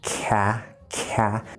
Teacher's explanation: That can be kind of difficult, starting in that K position for k, k, and then shifting all the way to the front for ah, ka, ka. You'll almost feel like your tongue kind of has to go like this a little bit.